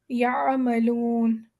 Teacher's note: یہاں پر ہم عین کی جب آواز نکالیں گے تو ہم بہت سافٹلی نکالیں گے، لیکن حلق کے اندر سے نکالیں گے. یعملون، جیسے درمیان والے حلق کے درمیانی حصے سے آواز نکلتی ہے. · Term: عین کی آواز